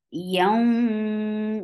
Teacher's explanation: This is gum with gunna. Keep the sound in your nose for a longer period of time.